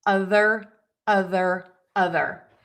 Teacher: for that voiced th your tongue has to be out of your mouth so that air can move over the top of your tongue. · So, you can see my tongue is out and then I pull it in as I make that th sound